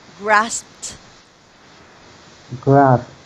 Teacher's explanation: So ED should sound T after the letter P.